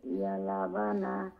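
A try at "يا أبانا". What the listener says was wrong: ইয়া জি শুনেন, ক্বালু ইয়া আবানা, লাম এটা না, আলিফ।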